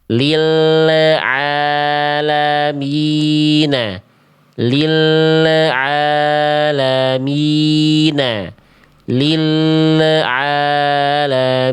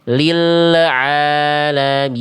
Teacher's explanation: Karena lamnya belum beres dilafalkan, sudah dilepas makhrajnya. Harusnya tunaikan dulu lamnya, masuk baru baca ain.